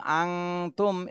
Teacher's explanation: নুন সাকিনের পরে ইকফার হরফ এজন্য গুন্না করতে হবে